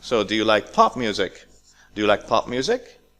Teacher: This is a yes/no question, so it's a rising.